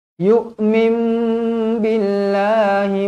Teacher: iqlab iqlab dibaca dengung dua harakat